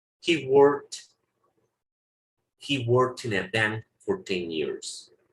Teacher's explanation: Está el sonido de la T. Poquito, no es una T bien pronunciada